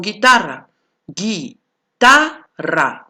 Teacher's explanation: Guitarra, no suena la U. Entonces tú te tienes que dar cuenta que cuando no suena la U, ya no es un diptongo.